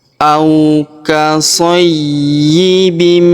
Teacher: Kemudian tanwin in huruf bin bertemu huruf mi yang berharokat tasydid, maka tanwin innya melebur masuk ke huruf mi ya. Kita tahan dan kita tekan serta kita dengungkan 2 sampai 3 harokat.